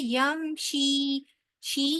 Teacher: यम शी या मद्दा है, लिहाजा इसको भी 2 हरफ के बराबर लंबा करेंगे